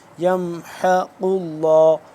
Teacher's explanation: حا زبر حا حلق کے درمیانی حصے سے